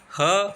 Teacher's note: ह सघोष महाप्राण काकल व्यंजन है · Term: सघोष महाप्राण काकल्य व्यंजन